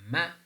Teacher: when you're producing M the manner in which ma is produced the air is coming out through our nose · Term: nasal